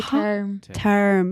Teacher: Scottish is really difficult because you roll your R's, but you don't roll them so like aggressively. They're like really subtly rolled, and that's really tough to do.